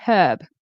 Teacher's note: I tend to say herb with an H. Then people in England or with a British accent, I believe they do the H like Canadians, but then they do the British R. They'll say herb or something like that.